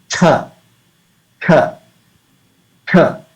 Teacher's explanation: It's an aspirated sound. You can feel the blow of air if you keep your hand before your mouth. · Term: mahaprana